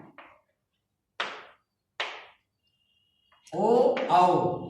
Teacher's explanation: ओ औ कंठोष्ठ ये ओठ और कंठ के माध्यम से बोले जाते हैं।